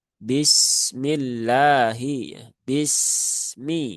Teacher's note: Maka tunaikan saja sifat rakhawah dari huruf sin.